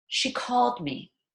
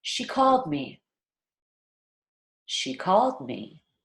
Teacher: we're really stressing the word called we're rushing she and were rushing me linger on the word called